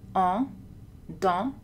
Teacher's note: langue un peu en arrière, bouche très ouverte, arrondie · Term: voyelles nasales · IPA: [ɑ̃]